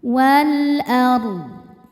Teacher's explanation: Lilladzi fatara huruf ra dibaca secara tafkhim karena barisnya fathah. Cara baca huruf ra ini adalah ditebalkan, pangkal lidah terangkat. · Huruf ra dibaca tafkhim karena sebelumnya berbaris fathah. Maka ra ini tebal. Wal ardh. Ra tebal dan ketika berhenti di huruf dodnya juga kan dimatikan.